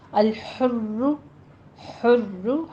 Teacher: ہا وسط حلق سے اور ضمہ کے ساتھ، یعنی دونوں ہونٹوں کو گول کرتے ہوئے ادا کیجیے۔ را کے اوپر ضمہ ہے، اس کو تکرار کے ساتھ پڑھیں گے، شد والا ضمہ ہے تو ہم نے اس کو پر پڑھنا ہے اور تکرار بھی ہوگی۔